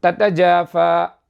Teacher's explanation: த எங்கு உண்டாகிறது? நுனிநாக்கு மேல் பற்களின் வேர் பகுதியில் இணையும் பொழுது த உண்டாகும்.